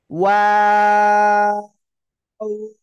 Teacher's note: দুই ঠোঁট গোল করিয়া, শুরুতেও গোল, আবার শেষেও গোল, শুধু মাঝখানে দুই দিকে প্রসারিত হয়, ঠিক আছে। দুই ঠোঁট গোল করিয়া ওয়াও অক্ষরটা 3 আলিফ টেনে পড়তে হয়। · ওয়াও দুই ঠোঁট গোল করিয়া উচ্চারণ করতে হবে